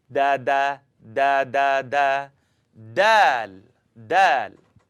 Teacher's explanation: I want you to tap your tongue behind the top teeth.